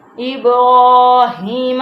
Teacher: را کے اوپر کھڑی زبر ہے جس کو ہم موٹا بھی پڑھیں گے اور لمبا بھی